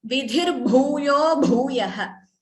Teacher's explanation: Here dhi and bhuyo, bhu and bhuyah, again bhu, Mahaprana.